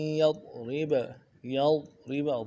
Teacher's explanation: ضاد کو موٹا کرنا ہے، دا کو باریک کرنا ہے، با کو بھی نرمی سے ادا کرنا ہے.